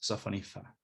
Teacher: the S is deleted and B changes pretty much into something like an F. So sophonisba is pronounced sophonifa.